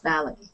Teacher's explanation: Valet is a French word, so we don't pronounce the T on the end. So it's valet.